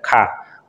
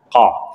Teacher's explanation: Tidak ada desisnya atau tidak ada udara yang keluar. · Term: qaf